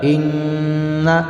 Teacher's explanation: حمزہ نون زیر ان نون زبرنا ان اس میں ہوگا غنہ، آواز ناک میں جائے گی